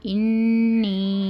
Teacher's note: نون مشدد ہے، اس لیے ہم گنہ کے ساتھ پڑھنا ہے۔ انی یا مدہ ہے، اس کو 2 حرکت کے برابر کھینچ کر پڑھنا